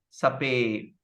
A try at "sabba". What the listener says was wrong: You go back again. You said Sabbe. See? This is the common mistake.